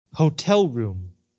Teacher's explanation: just returned to your hotel room again Hotel noun room noun two nouns together make one compound noun so the stress is on the first syllable